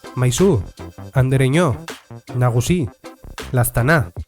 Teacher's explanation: En castellano no hay ningún cambio si llamas a Andrés, a Pepe o a tu madre o si los metes en una oración. En euskera simplemente se cambia el acento y aparece en la última sílaba. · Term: caso vocativo